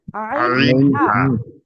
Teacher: কণ্ঠনালীর মাঝখান হতে উচ্চারিত হয় আইন, হা।